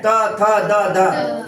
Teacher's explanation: ये दांत के बीच में जीभ आएगा